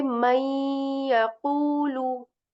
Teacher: And again here in this example, afternoon sakin, we see a letter ya here, right, which is again a yarmlun letter. So we will skip the sound of noon here, and we will say may yaqulu rather than man yaqulu.